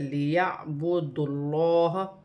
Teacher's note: یہاں پر لام مشدد ہے، اور دال کو لام کے ساتھ ملا کر پڑھا جائے گا، لیعبد اللہ، اور یہاں پر لام جو ہے موٹی پڑھی جائے گی، کیونکہ اللہ کی لام سے پہلے پیش آ رہی ہے تو یہ لام موٹی پڑھی جائے گی، اور ایک کھڑی زبر بھی 1 الف کی مقدار کھینچ کے بھی پڑھا جائے گا۔